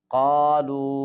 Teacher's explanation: قاف کو موٹا کر کے پڑھیں گے اور چھوٹا مد ہے اس کے اوپر